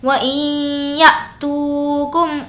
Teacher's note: یا اب ہمیں یہاں پر جھٹکا دینا ہے، وہ کیونکہ حمزہ ساکنہ کے پڑھنے میں جھٹکا ہوتا ہے. وَإِن تو کو کھینچیں گے، واو مدہ ہے